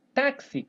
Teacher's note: Então note que eu pronunciei esse X com dois fonemas, né? Que é o KS.